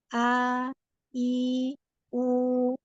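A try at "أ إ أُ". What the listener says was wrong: bagus. Coba A-nya diulang sekali lagi.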